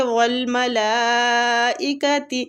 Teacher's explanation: یہ مد واجب متصل ہو رہی ہے، اس کو کھینچنے کی مقدار 4 سے 5 حرکات ہے